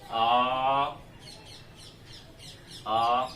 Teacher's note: आ एक ऐसा स्वर है जिसके उच्चारण में मुख पूरा खुलता है, एकमात्र स्वर ऐसा है आ जिसके उच्चारण में मुख पूरा खुलता है। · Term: विवृत